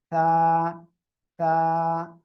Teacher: জিহ্বার আগা দুই দাঁতের আগার সঙ্গে লাগিয়ে উচ্চারণ হবে, বাতাস হালকা বের করতে হবে।